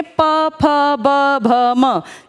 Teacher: अगर आप बोल के देखेंगे प फ ब भ म, इसमें सारा हवा का प्रेशर ओष्ठ पर है